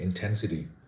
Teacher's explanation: um someone with a with a clear Indian accent or Indian pronunciation would say intensity with uniform stress on all the syllables or all all the parts of the word but the word intensity is stressed on the second syllable